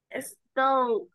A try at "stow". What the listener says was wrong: No empezamos con una E. Empezamos con una S. Stow.